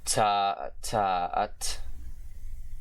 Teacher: Alright, got another aspirated plosive, or English plosive if you want to call them that, with the voiceless, alveolar, aspirated plosive consonant